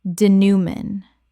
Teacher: Three syllables with a nasal final syllable inherited from French.